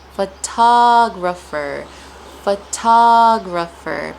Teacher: The stress is placed on ta, and this time the T sound does sound like a T. Ta, ta, ta, ta.